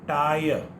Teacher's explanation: There is no y sound in this. Only t is followed by a, e and a.